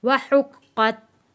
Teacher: वाव को अदा करते हुए होंठों को आपने गोल करके वाव अदा करना है